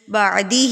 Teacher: ہاں کے نیچے کھڑی زیر ہے تو اس کو ہم ایک حرکت کے برابر کھینچیں گے